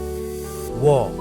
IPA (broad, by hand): wʌ